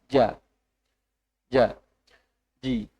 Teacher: Bagian tengah lidah bertemu dengan langit-langit atas. Bertemu itu tidak merapat, tidak sangat rapat. Jadi kalau biasanya keluarnya jim itu banyak udara yang keluar, itu karena lidahnya terlalu rapat dengan dinding atas, langit-langit atas.